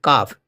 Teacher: زبان کی بیچ کا حصہ اور تالوں کا سخت حصے سے کاف ادا ہوتا ہے